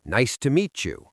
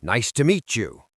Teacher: >> I had a situation with a student who was very polite, but he sounded aggressive because he ended every sentence with a falling hard tone. He would say, "Nice to meet you." It sounded like a threat.